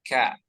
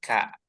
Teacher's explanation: Mumtaz mtaz kemudian sedikit di ada Hamas di huruf Kaf ya jadi setiap ada huruf Kaf itu ada Hames sedikit